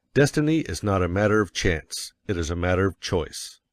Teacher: And you will put some emphasis on not, else your hearers may think you are affirming that destiny is a matter of chance. By all means, you must emphasize chance, for it is one of the two big ideas in the statement. · Of course, you will want to emphasize destiny, for it is the principal idea in your declaration. And you will put some emphasis on not, else your hearers may think you are affirming that destiny is a matter of chance.